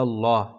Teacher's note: اللہ کے لام سے پہلے زبر ہے اس لیے پر ہوگا۔ یاد رکھیں اللہ کا لام ہو اور اس سے پہلے زبر یا پیش ہو تو پر، اور زیر ہو تو باریک ہوتا ہے، یہاں زبر ہے تو یہاں پر پڑھیں گے، یعنی موٹی آواز سے پڑھیں۔